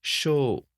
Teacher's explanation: shou is two moras or two beats. But notice this is still only one syllable.